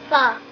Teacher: put your top teeth on your bottom lip and push that fuh out in a nice long string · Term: fuh sound